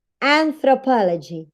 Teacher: you have po as the strongest syllable in the word. That's why it has a primary stress.